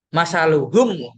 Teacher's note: enggak ada dengung-dengungnya sama sekali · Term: Idhar syafawi